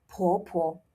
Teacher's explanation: Now, this is P, right? So make sure to blow. 婆婆. Put your hand in front of your mouth and feel the air.